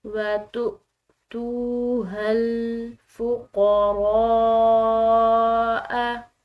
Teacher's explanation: را کے بعد الف اس کے اوپر بڑی مد آ رہی ہے تو اس کو ہم نے کھنچاؤ دینا ہے، لمبا ادا کرنا ہے، اور بڑی مد کو جو لمبا ادا کرنا ہے وہ کم از کم 3 الف کی مقدار ہوگا۔